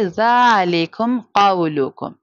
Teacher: ہم اظہار شفوی کریں گے یعنی بغیر غنہ کے پڑھیں گے